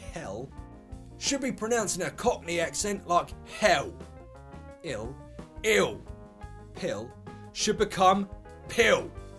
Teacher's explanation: the L Sound can sometimes sound like a w l to L for example in these words hell should be